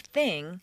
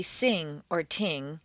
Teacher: most people tend to replace the unvoiced th with s or T and the voiced one with Z or D so instead of · teeth it's a quter inch lower and forward between the teeth the unvoiced th is like an S between the teeth